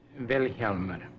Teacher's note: The accent's on the first syllable.